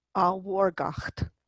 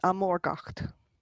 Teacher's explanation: He receives the H at the beginning that lenits that M